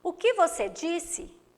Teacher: esse que é um monossílabo átono que foi pronunciado com menos intensidade